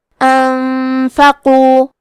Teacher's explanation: حرف القاف کی ادائیگی زبان کے جڑ اور تالو کے نرم حصے سے ہے. قاف حروف التفخیم میں سے ہے تو ہم یہ حرف کو موٹی آواز میں پڑھیں گے. · کلمت انفقو میں نون ساکن ہے پھر حرف الفا ہے، یہاں حکم ہے اخفاء تو ہم یہ حکم کو غنہ کے ساتھ ادا کریں گے